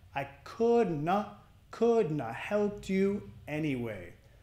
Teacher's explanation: Nota la ED del helped. Pega del sonido T, T, T. I couldn't have helped you anyway.